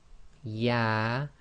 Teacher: Yah, which is almost exactly in the middle of the mouth, i.e. your middle of your tongue touching the top hard pallet in the middle of your mouth